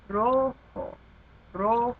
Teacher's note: Because it ends in a vowel, o, the emphasis goes on the second to last syllable.